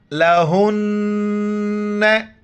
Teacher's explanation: ہا گلے سے ادا نہیں ہوتا ہے بلکہ جیسے منہ سے ہوا نکالتے اسی طرح ہا کو ادا کریں گے